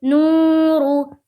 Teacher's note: نورو، نون واو پیش نو، را پیش رو، نورو، نو، واو ساکن سے پہلے پیش ہے، واو مدہ ہوگا، واو مدہ کو ایک الف کے برابر کھینچ کر پڑھیں گے، جیسے نو، رو را کے اوپر پیش کی حرکت ہے، پیش کو جلدی پڑھیں، تھوڑا بھی نہ کھینچیں، معروف پڑھیں، مجہول آواز سے بچے،